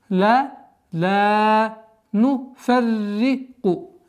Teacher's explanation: Здесь мягкое произношение ра с удвоением.